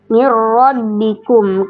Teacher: Dia huruf ro-nya dibaca tebal. Namanya ro takim.